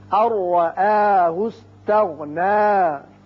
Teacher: الرآہ استغنى. نون ساکن کے بعد را ہے، ادغام بغیر غنہ ہوگا